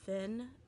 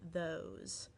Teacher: The TH in thin is they're unvoiced, or it is unvoiced, so it would not cause vibration in your throat. But in those, it is voiced. So we kind of spell them the same in English, but they actually are two different sounds. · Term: two TH sounds